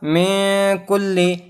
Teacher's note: نون ساکن کے بعد کاف آیا ہے جو کہ حروف اخفا میں سے ہے تو یہاں بھی ہم غنہ کے ساتھ پڑھیں گے